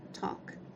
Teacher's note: temos a letra l no entanto nós não vamos pronunciar essa letra